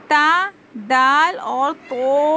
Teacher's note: वाला जुबान की जो टिप है वह कहां पर लगाएंगे अभी ऊपर के दांतों के जड़ में लगाने से त दाल और तो अदा होता है